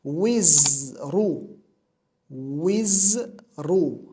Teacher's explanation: Vav harfi bu yerda kasra bilan keldi, za harfi sukun bilan keldi. Shu sababli wiz deb to'xtaymiz va undan keyin ra harfi damma bilan keldi.